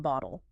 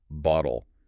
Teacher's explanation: Acoustically, it sounds almost exactly like a very fast D. Instead of a sharp, aspirated tap behind the teeth, the tongue just briefly flicks against the roof of the mouth and keeps moving. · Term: alveolar flap